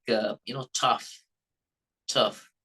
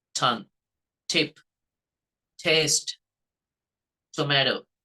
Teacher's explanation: The tip of the tongue touches the edge of the upper jaw or the ridge.